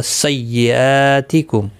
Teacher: حمزہ کے اوپر کھڑی زبر ہے، 1 الف کی مقدار کے برابر کھینچ کر پڑھیں گے، باقی کسی بھی حرکت والے حرف کو کھینچنا نہیں.